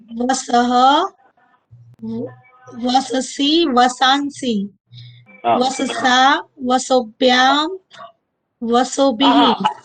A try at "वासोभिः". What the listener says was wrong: नहीं नहीं नहीं, वसो भी नहीं है, वाह वाह है ना, दीर्घ है। वास,